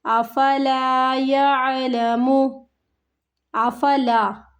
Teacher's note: وَإِنَّهُ لِحُبِّ الْخَيْرِ، وَإِنَّهُ لِحُبِّ الْخَيْرِ لَشَدِيدٌ، لَشَدِيدٌ أَفَلَا يَعْلَمُ، أَفَلَا يَعْلَمُ، أَفَلا، آفا کو نہیں کھینچنا، لام الف زبر لا حروف مد کھینچنا ہے 1 الف کی مقدار کے برابر